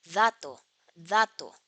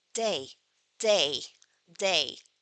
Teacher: But the main difference between English and Spanish plosives is the articulation of d and t, and it is very important to be aware of this. Because in Spanish, the point of articulation is dental. As in dato, dato. But in English, it is alveolar as in day, day, day. So, in Spanish, the tip of the tongue is between your teeth.